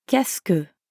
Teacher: Listen to how que and est-ce que blend together